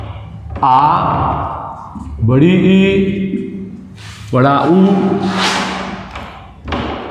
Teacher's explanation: 2 second का समय लगता है। यानी कि ह्रस्व स्वर से 1 सेकंड ज़्यादा। जब हम किसी वर्ण को बोलेंगे, उच्चारण करेंगे उसका, तो उस समय 2 सेकंड का समय लगेगा। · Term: दीर्घ स्वर